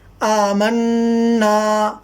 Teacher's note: اس کو ہم نون کو تھوڑا غنہ کر کے پڑھتے ہیں